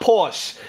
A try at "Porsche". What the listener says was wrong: The word is Porsche. The E you pronounce. You pronounce the E.